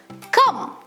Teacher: The vowel symbol creates the sound cum, indicating nasalization.